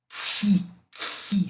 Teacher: Imaginar um C aspirado, né? Um K aspirado, chega muito próximo desse som de ri · Você forçar bastante o K de maneira que ele fique soprado.